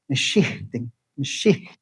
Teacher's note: Notice how the H is like a little aspiration.